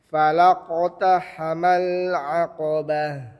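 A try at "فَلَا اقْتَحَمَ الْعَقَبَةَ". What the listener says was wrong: Lamnya jangan sampai tebal. Fala di sini tetap tipis, fa dan lam, kemudian masuk qaf dia baru tebal. Falaqata, laqata. Di sini kalau qalah kecil saja. Laqata.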